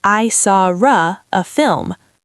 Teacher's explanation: So, we invent a sound to bridge the gap. We insert an R sound.